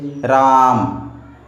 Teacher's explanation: दीर्घ स्वर से अधिक समय लगता है या 3 मात्रा का समय लगता है, उसे पुलुत स्वर कहते हैं।